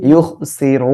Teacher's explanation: আর রর উপরে পেশ আসলে মোটা করে পড়বো ইউখসিরু ঠিক আছে এভাবে মোটা করে পড়বো আর এক আলিফ টেনে